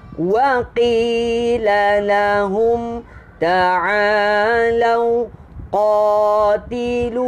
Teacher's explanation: Waqi qaf pangkal lidah, dua harakat sini. Pangkal lidah, pangkal lidah, lidah paling belakang.